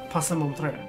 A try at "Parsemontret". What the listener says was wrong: I don't think you pronounce the E. Because French people don't like to pronounce half the letters in the words. Parsemontret. Yes, but not the T.